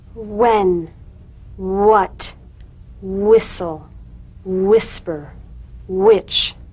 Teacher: words that begin with wh are pronounced h.w